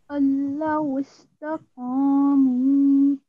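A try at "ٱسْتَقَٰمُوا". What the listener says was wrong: Very nicely recited.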